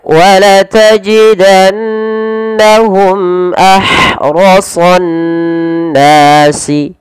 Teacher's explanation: Ro dan so ditebalkan, terutama huruf sad karena dia sifat isti'la dan idbaqnya